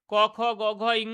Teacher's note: ক, খ, গ, ঘ, ঙ এগুলোকে বলা হচ্ছে কণ্ঠ ব্যঞ্জন ধ্বনি, যেহেতু কণ্ঠ থেকে উচ্চারিত হচ্ছে